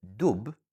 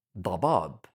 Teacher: Added to this, Arabic has a strong d sound, d. In the word dub, bear, we use a soft d sound, but in dabab, fog, we use the strong emphatic one.